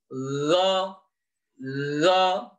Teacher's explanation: Go berada di tenggorokan bagian atas. Nah, sama dengan kho tadi, berada di bagian atas dan di belakang pangkal lidah kita.